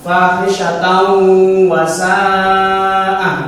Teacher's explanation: 2 ketukan. Maka harus dimasukkan dengan mendengung 2 ketukan